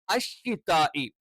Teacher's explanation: നാവിന്റെ മധ്യഭാഗം അഥവാ നാവിന്റെ സെന്റർ മേലെ അണ്ണാക്കിൽ ടച്ച് ചെയ്തുകൊണ്ടാണ് ഷ എന്നുള്ള ഉച്ചരണം പറയേണ്ടത്